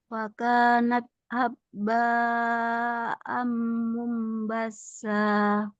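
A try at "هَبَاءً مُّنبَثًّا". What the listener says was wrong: Haba nggak ada tasydid.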